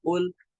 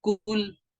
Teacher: یہ کاف جو ہے یہ روٹ آف دا ٹنگ اور hard part of the پیلیٹ، وہاں سے ادا ہوتا ہے